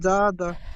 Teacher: এখানে জাল আলিফ জবার যা এক আলিফ টান দিয়ে পড়তে হবে